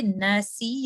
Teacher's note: ایک اور چیز نون میں ساتھ شامل ہو رہی ہے وہ ہے آواز ناک سے آ رہی ہے, اس کو کہتے ہیں غنہ.